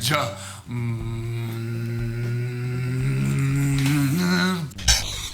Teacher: with j, you should feel a little hum in your voice box